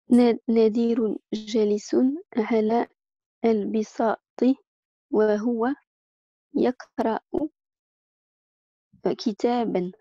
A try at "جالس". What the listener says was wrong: Juste ici, quand tu as lu Jalisun, on dit Jalisun. Essayez souvent de faire les bons temps de prononciation. C'est ce qu'on appelle les allongements. Ce qu'on appelle en arabe al-mad.